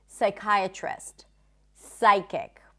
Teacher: Whenever there is a PS at the beginning of a word, the P is not pronounced